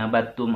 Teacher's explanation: tidak dikolkolahkan nih abattum, ada dal sukun